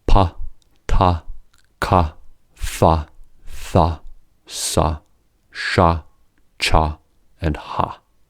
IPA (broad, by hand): p, t, k, f, θ, s, ʃ, tʃ, and h